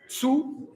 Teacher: it's not a Z sound, it's the hi-hat. Zu, and it's not zu, it's one vowel.